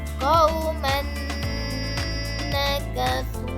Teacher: nun di sini kita baca dia dengan dengung